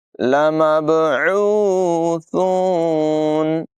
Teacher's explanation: बा में कलकला होगा, आइन की आवाज़ नुमाया करेंगे, सा को बग़ैर सीटी के अदा करेंगे।